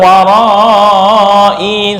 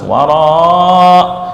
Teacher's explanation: ketika wakaf dibaca sukun untuk hamzah, bukan warai, salah, harus wara